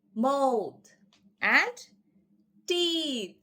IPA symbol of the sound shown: θ